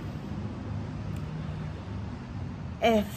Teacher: Les cordes vocales écartées ne vibrent pas.